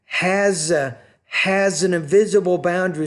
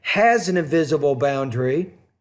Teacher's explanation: So has an invisible boundary, so that S kind of sounds like a Z. You blend it.